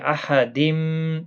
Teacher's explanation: تنوین کے بعد یارملون کا میم آئے، ادغام مع الغنہ ہوگا